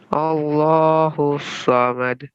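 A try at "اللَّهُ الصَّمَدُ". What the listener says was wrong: جی قلقلہ کیجیے.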